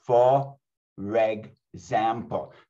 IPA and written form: fə-reg-zæm-pəl (For example)